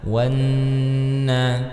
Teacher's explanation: huruf waw yang langsung masuk ke dalam huruf nun ya, yaitu gunnah di dalamnya, maka ditahan